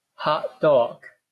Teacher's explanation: The T sound is not there in the actual pronunciation.